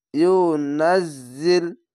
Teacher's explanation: এই যা উচ্চারণটি ঝিনঝিন করে আওয়াজ হবে, যা এরকম। ইউনাজ্জিল বিহি, খাড়ো জড়ে এক আলিফ টেনে পড়বেন।